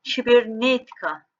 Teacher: vurğu tikadan bir heca önə düşür yəni bu hissə vurğu qəbul etmir